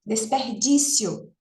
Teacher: a gente pronuncia como uma como uma paroxítona numa emissão de voz só desperdício C veja que a gente não faz uma uma quebrar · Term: paroxitono aparente